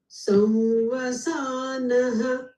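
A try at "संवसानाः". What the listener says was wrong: No, okay, slightly accelerated. Slightly, marginal.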